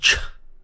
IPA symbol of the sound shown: tʃ